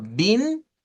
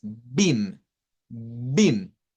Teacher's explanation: nótese que mis labios no se juntan como para la m